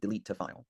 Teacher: where we have a final consonant sound delete that connects to the following vowel. delete to file.